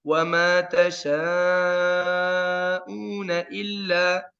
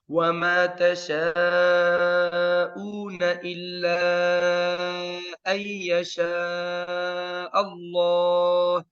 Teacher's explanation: berhenti atas illa, betul, hilang madnya. Tapi kalau saya sambung, wajib ada madnya. Karena saya memisahkan antara huruf mad dan sebabnya. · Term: mad munfasil